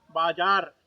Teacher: ಬಾಜಾರ ಎಂಬುದಾಗಿ ಪೂರ್ತಿ ರ ಎಂಬ ಅಕ್ಷರವನ್ನು ಬರೆದರು ಹೇಳುವಾಗ ನಾವು ಬಾಜಾರ್ ಎಂಬುದಾಗಿ ಹೇಳುತ್ತೇವೆ ಅಂದರೆ ಪೂರ್ಣಾಕ್ಷರವನ್ನು ಬರೆದರು ಕೂಡ ಅರ್ಧಾಕ್ಷರವಾಗಿ ಹೇಳತಕ್ಕಂತಹ ಒಂದು ವಿಧಿ ವಿಧಾನ ಹಿಂದಿ ಭಾಷೆಯಲ್ಲಿ